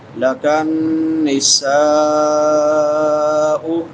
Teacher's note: سین سیٹی والے حروف میں سے ہے